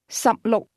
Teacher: 16 is pronounced with two low-level tones.